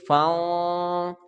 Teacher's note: صاد حروف اخفا کا ہے تو لہٰذا نون ساکن پر اخفا کریں گے، آواز ہماری ناک میں چلی جائے گی تو لمبائی ایک الف کے برابر ہوگی، تو اس کو پڑھیں